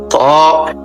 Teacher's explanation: এই হরফটি 1 আলিফ পরিমাণ লম্বা হবে, জিহ্বার আগা উপরের দাঁতের গোড়ায় ভিতর দিয়া ধাক্কা দিয়ে মুখ খুলে দিবে।